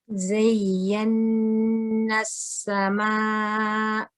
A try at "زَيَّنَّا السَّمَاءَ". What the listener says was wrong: The only thing I would say is, you know, when you're joining the za with the ya, you were a little bit slow. So you said zay, zay, which means that you are keeping it running.